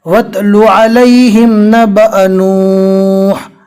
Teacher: वाव को डायरेक्ट ता से मिलाना है